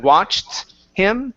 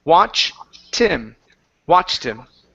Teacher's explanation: cut off that t and add it to the word him it'll make it easier to say